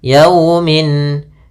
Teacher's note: lafal yau ada fathah bertemu sukun, ini bacaan lin lembut dalam pelafalannya